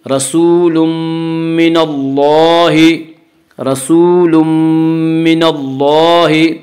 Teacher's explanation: تنوین کے بعد یومنو کے 4 حرفوں میں سے میم آ رہا ہے، اس لیے تنوین کو میم سے ملا کر نون غنہ کے ساتھ پڑھیں گے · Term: ادغام ناقص